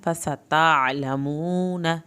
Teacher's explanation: फसतअलमून नून की ज़बर को लंबा नहीं करना